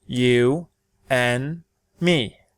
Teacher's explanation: It usually sounds like this: /ʌ/ /ʌ/ /ʌ/ or this: /ɛ/ /ɛ/ /ɛ/ For example, if I were to use the strong form to say this I would say: /ju ænd mi/ In the weak form I would use the schwa sound like this: /ju ɘn mi/ Listen to the difference: /ænd/ /ɘn/ /ænd/ /ɘn/ In a future lesson we'll learn when to use the strong form or the weak form.